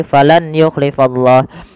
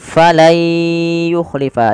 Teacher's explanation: diganti suara nunnya menjadi suara ya. Kemudian langkah kedua ditahan dengan gunah. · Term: idgham